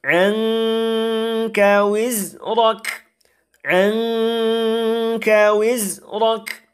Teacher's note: Jadi dia didengungkan, kemudian disamarkan, kemudian ditipiskan. Jadi nun mati itu tidak dijelaskan bunyinya, tetapi dialihkan bunyinya itu ke makhraj huruf kaf yang berada setelahnya. Maka cara membacanya, anka wizrak.